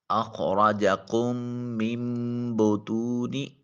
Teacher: کاف کو پہلے میم کی بجائے دوسرے میم کے ساتھ ملائیں گے، اور نون کے اندر جو چھوٹا میم لکھا ہوا ہے، قانون یہ ہے کہ جب نون ساکن یا نون تنوین کے بعد با آ جائے، با الف کے بعد جو با ہے، تو نون کو چھوٹی میم کے ساتھ بدل کر ادا کرتے ہیں۔ اخرجکم من بطون، میم کو چھوٹی میم کے ساتھ ملائیں گے، نون کے ساتھ نہیں ملائیں گے۔